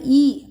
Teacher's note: நாக்கின் அடிப்பகுதி மேல்வாயின் அடிப்பகுதியை தொடும்